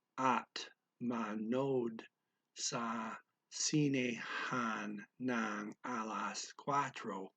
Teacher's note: he did not say the O twice for manood. He just said manood.